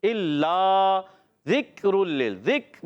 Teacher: ذکر میں کاف کو ہلانا نہیں ہوتا, کلکلا نہیں کرنا ہوتا ہے, تو یہ شدیدہ محموسہ حرف ہے اور اس چیز کا خاص خیال رکھنا ہے.